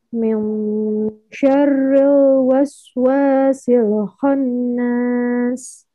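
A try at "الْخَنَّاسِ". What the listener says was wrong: Nun bertasdidnya tahan lagi. Khannas.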